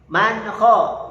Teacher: Jangan dilebihkan. N-nya jelas dan satu ketukan. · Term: izhar